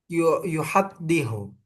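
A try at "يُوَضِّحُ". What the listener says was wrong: yuwaddihu, wawu. Yang kedua wawu.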